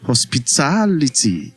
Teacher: hospitality is stressed on the third to the last syllable. Hospitality that is the last syllable is ty.